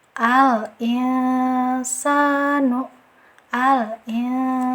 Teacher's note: Ikhfanya termasuk ikhfa ausat, jadi pertengahan saja ya. Jadi pertengahan itu maksudnya bunyinya antara n sama eng, di tengah-tengah saja. Jadi nggak terlalu n, nggak terlalu eng, tengah-tengah, seperti itu ya.